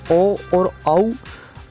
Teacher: जिन वर्णों का उच्चारण स्थान कंठ एवं ओष्ठ यानी होठ दोनों होता है उन्हें कंठोष्ट वर्ण कहते हैं।